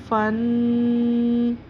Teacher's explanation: فا پڑی زبر نون ساکن فن، یہ جو ہم نے آواز کو دبایا ہے فن، یہ غنّہ ہے